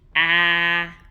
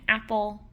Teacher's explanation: Our low front vowel is going to be A, which we hear in apple.